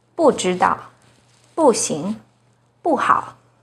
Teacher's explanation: When 不 is followed by a non-fourth tone, which are the first, second, and third tones, it's pronounced as the fourth tone